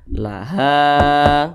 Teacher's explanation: mad tabi'i panjangnya 2 harokat atau kira-kira 2 ketukan.